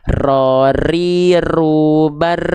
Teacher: kesalahan atau ketidaksempurnaan kecil dari huruf ro adalah getarannya terlampau banyak